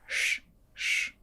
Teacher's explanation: this Russian sh is a little bit harsher than in English